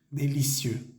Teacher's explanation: La EUX al final de délicieux se pronuncia E. Délicieux, con la boca un poco cerrada